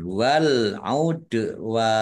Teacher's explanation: Dal sukun bacaan kolkolah dibaca memantul, ditampakkan pantulannya